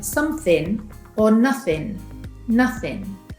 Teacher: With words ending in -ing we often pronounce them without the “g” sound